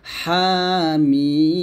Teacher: হা এখানে এক লিপ টান হবে, মিম 4 লিপ টান হবে। হাটা একটু গলার মাঝখান থেকে চাপ দিয়ে বলতে হবে